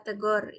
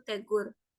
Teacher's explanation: kata tegor yang seharusnya tidak digunakan dalam pemakaian bahasa Indonesia karena pada kata tersebut terdapat proses perubahan fonem U menjadi fonem o